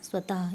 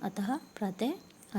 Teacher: विसर्ग का उच्चारण अघोष ह व्यंजन के समान होता है। मतलब विसर्ग को जब हम पढ़ते हैं तो ह व्यंजन के समान उसका उच्चारण, जैसे स्वतः, ये विसर्ग जब लगते हैं तो ह की ध्वनि करते हैं, अतः, प्रातः आदि।